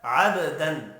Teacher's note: با ساکن ہے، قلقلہ کریں گے